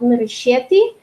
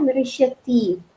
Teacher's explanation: Северяне будут говорить на предпоследний слог нырыщеты, а южане будут и литературный вариант нырыщети на последний слог.